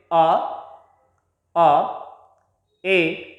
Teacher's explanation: कंठ से डायरेक्ट ध्वनि निकलती है और हम जिस प्रकार से आप बोलकर देखिए ए, मुंह में एक स्पेस हो जाता है, कोई रेस्ट्रिक्शन नहीं रहता, कोई बाधा नहीं रहती, हवा तुरंत बाहर निकलती है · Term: प्योर वोवल्स